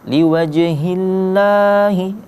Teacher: Ya, kalau kita lihat di situ kan wajhi itu berbaris kasrah, maka lafaz Allah di situ kita baca tipis atau tarqiq istilahnya.